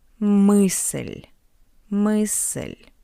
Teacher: And after L we have the soft sign. That's why L is soft.